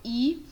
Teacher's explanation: ela é uma vogal que é chamada de anterior, porque ela é produzida na parte anterior da boca, então nessa parte mais da frente.